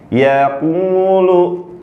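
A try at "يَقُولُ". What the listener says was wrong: Jangan masuk hidung. Yaqulu. Jangan yaqum. Jangan masuk hidung.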